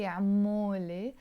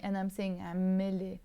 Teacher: I'm not going to say amole. I'm kind of dropping this o. I'm saying amele. The sound becomes more like a amele.